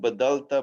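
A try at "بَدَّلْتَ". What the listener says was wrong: Here, very important, Shadda. Here, baddalta.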